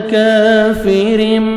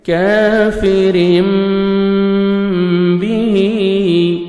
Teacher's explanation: अव्वल काफिरिम अलिफ मद्दा 1 सेकंड आपने काफ को खींचना है और काफ को बारीक पढ़ना है। तनवीन के बाद बा आ रहा है, तो यहाँ पे आपने तनवीन की नून को मीम में चेंज करना है, जिसको बोलते हैं इक़लाब।